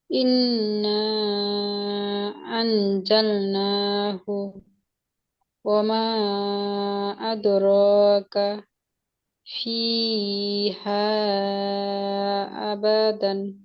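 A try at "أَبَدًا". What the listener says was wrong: আবাদান। আয় টান হয়ে গেছিল একটু, একটু টান হলে সেটার মধ্যে তো আই হয়ে যায়, একটুও টানা যাবে না হরকতে।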